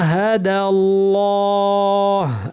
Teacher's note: আল্লাহের লামটা এখানে ভারি হবে কারণ এর আগে জবর আছে